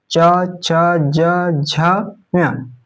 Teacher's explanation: च वर्ग च छ ज झ ञ, ये तालु से उच्चारित होता है।